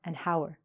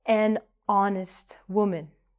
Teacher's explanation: we're not saying the H. So, because it makes a vowel sound, we have to put the article an. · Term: silent